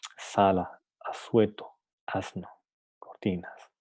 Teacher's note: Justo después de los dientes. Es fricativo porque nunca, en ningún momento impide por completo el paso del aire